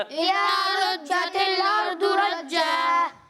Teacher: را کو پر پڑھنا ہے اور ضاد کو بھی پر پڑھنا ہے